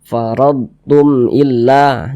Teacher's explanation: dibaca jelas Tidak berdenggung Baca pendek saja faradum illa Jangan dibaca Tum Illah jangan dipanjangkan pendek saja faradum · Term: izhar syafawi